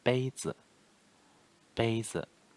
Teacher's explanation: 我爸爸今天在工作。The next one, 杯子，杯子 pronunciation 杯 high tone, the first tone 杯 and 子 is neutral tone